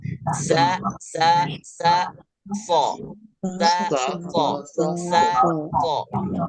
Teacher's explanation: Sa so. Jadi membaca so tidak perlu memonyongkan bibir. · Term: huruf so